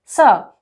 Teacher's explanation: स इसको हम दंत स कहते हैं। दंत स इसलिए कहते हैं क्योंकि इस वर्ण के उच्चारण में हमारी जिह्वा दांत को स्पर्श करती है।